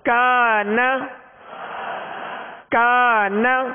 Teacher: اب اس الف مدہ سے پہلے حرف کاف، ڈنڈی والا کاف ہے، باریک کاف ہے، لہذا اس الف کو باریک پڑھیں گے